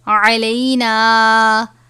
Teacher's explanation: عین اور حا باریک ہا یہ حلق سے ادا ہوتے ہیں یعنی عین اور حا کو باریک پڑھنا چاہیے.